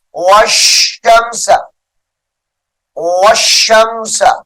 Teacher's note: واو کو شین مشدد کے ساتھ ملائیں گے